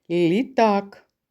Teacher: який перший звук у слові літак це звук ль який це звук М'який приголосний